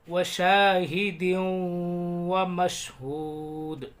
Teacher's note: تنوین کے بعد واو آ رہا ہے، یہاں پر ادغام ہوگا، غنہ کریں گے۔